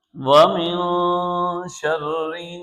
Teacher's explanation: یہاں پر نون ساکن ہے، اور نون ساکن کے بعد شین ہے جو کہ حروف اخفاء میں سے ہے، تو یہاں ہم نون ساکن پر اخفاء کریں گے۔